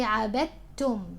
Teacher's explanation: So you say عبدتم, not عبدتم. Do not give qalqala to the dal. There is no such thing here.